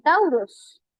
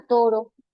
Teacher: Las dos vocales se convirtieron en una sola vocal. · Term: monoptongación